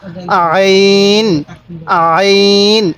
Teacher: আইনটা উচ্চারণের সময় আমরা গলার মধ্যে হালকা চাপ দিলে আইনটা সহি উচ্চারণ হবে